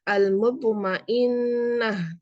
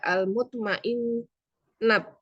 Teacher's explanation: Dan huruf tak marbutoh ketika wakof dibaca menjadi hak. Al-mutmainnah, tidak al-mutmainnat.